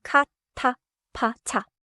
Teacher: listen for a clear puff of air, especially in 카, 타, 파, 차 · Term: 거센소리, 거센 소리